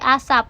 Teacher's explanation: akan berealisasi menjadi P tertutup pada posisi koda seperti asap. Dengan demikian dapat dikatakan bahwa P kecil dan juga P tertutup itu merupakan realisasi dari fonem konsonan P.